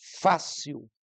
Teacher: a mais forte a palavra pode ser paroxítona como a palavra fácil em que o fa é a sílaba forte